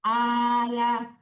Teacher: ibu jangan ditekan ke lam tuh jangan al tapi ala